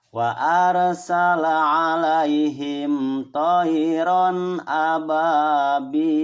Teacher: Banyak mad, bil juga dibaca mad atau panjang.